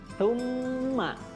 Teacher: cara membacanya lidahnya seperti digigit, ya, antara gigi atas dan gigi bawah. Jadi bukan summa, bukan sa, tapi tsumma.